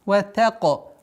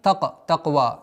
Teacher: Здесь та мягкая, каф твердая. чтобы с мягкого звука переходим на твердый.